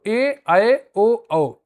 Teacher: ए ऐ ओ औ को संयुक्त स्वर या विजातीय स्वर कहते हैं। ये दो भिन्न स्वरों के मेल से बनते हैं। जैसे आ और इ मिलकर ए बनाते हैं और आ और उ मिलकर ओ बनाते हैं।